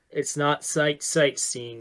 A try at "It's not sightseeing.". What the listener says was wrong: Little stutter on the sight.